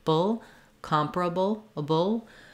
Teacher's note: can see that the vowels change because of that stress pattern the second a in able is also a schwa and then the BL ending it's a syllabic l so I'm just moving quickly from the to the UL sound · it's a syllabic L. So I'm just moving quickly from the B to the L sound, bull, comparable, a bull, so that I can, there's not really much vowel there at all.